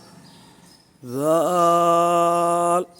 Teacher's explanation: اس حرف پر سختی بالکل پیدا نہیں کرنی، اس کو نرمی سے پڑھنا ہے، اور اس پر سیٹی کی آواز ہرگز پیدا نہ کریں، وگرنہ یہ زا بن جائے گی۔